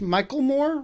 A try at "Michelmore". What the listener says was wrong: No, it's Michelmore, as if there were a T in there.